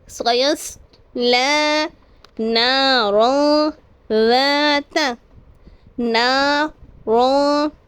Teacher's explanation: دو زبر کے بعد حرف اخفا میں سے ذال ہے، تو یہاں پر غنہ کر کے پڑھیں گے